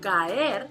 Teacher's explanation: it's an occurrence of two vowel sounds without a pause or an intervening consonant sound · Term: hiatus